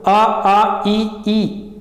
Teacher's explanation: नाक पे कोई प्रेशर नहीं जाता है, तो जो प्राण वायु है वो कहाँ से निकलता है? मुंह से निकलता है, नाक से नहीं निकलता है। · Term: मौखिक स्वर